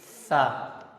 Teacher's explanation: Jangan ada desisan seperti kayak huruf sin. Karena huruf sa itu tidak memiliki desisan seperti halnya huruf sin.